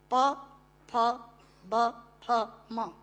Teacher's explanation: दोनों होंठ मिलाकर बोले जा सकते हैं। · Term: ओष्ठांग